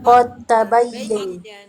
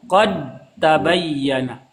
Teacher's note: Da-nya Qad tabayyin. jadi hilang atau da-nya itu dimasukkan ke ta jadi satu.